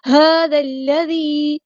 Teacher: ہا کو سمپل ادا کرنا ہے، ہا نہیں کرنا، ہا هذا الذي، ذال کو ہم نے لام کے ساتھ ملا دینا ہے